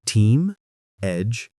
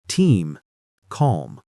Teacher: Slower and slightly down on the last word equals you're safe, I'm steady.